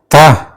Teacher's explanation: Ta is strong and voiceless sound, In a voiceless sound, the vocal cords do not vibrate